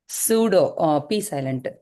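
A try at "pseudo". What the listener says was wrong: Very good.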